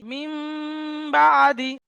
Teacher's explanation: নুন সাকিনকে মিম দ্বারা পরিবর্তন করে এক আলিফ গুন্না সহ পড়তে হয় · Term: ইকলাব